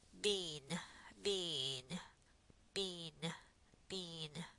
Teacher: Do you feel a little nasalization going on?